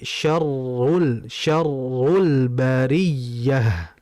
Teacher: Getaran pada huruf R dengan tashdid ini sangat rentan. Rentan baik karena getaran yang terlalu besar atau mungkin rentan karena tidak ada getaran sama sekali.